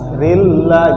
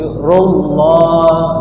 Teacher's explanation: Rullah lafzul jalalah yang jenisnya tebal, dibaca tebal. Rullah, rilla itu tipis, tapi rullah dibaca tebal